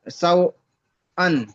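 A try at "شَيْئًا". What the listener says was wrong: এটা ওয়াও নেই, ইয়া মাদ্দা এসছে, এই ইয়ালিন এসছে। ওয়াও নেই জি, ইয়া সাই।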